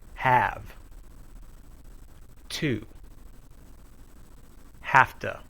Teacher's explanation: blend the words have and two together we say have to the voiced sound changes to voiceless